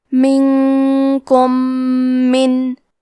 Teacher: ادغام کا معنی ہے حرف کو حرف میں داخل کرنا، تو ہم میم ساکن کو دوسرے میم میں ملا کے ایک ہی میم غنہ اور تشدید کے ساتھ پڑھیں گے۔ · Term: ادغام متماثلین صغیر